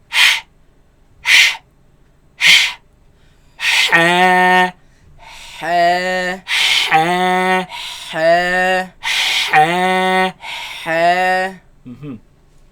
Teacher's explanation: this epiglottis moves against the back of the throat, leaving a very narrow passage, a very tight passage from which the air passes through. And that is what produces this sharp sound.